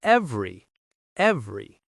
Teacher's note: The middle syllable disappears, and the stress is on the first part